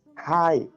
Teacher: Hai itu nadanya adalah jatuh